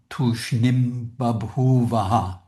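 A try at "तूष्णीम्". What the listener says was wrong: Okay, that was pretty good, but just that word tushnim, be careful, get both vowels long. Tushnim. Exactly so, tushnim babhuvaha, yeah.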